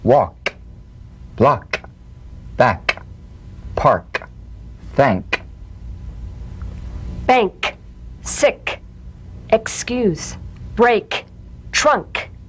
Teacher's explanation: the unvoiced tongue back plosive consonant with the tongue in the G position let the tongue spring away in the soft unvoiced click of · with the tongue in the G position let the tongue spring away in the soft unvoiced click of the K drum beat feel a crisp tap and a pulsation in the back of